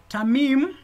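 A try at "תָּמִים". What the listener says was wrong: Mm-hmm.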